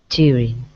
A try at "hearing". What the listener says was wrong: Not jeering, but with a h, hearing.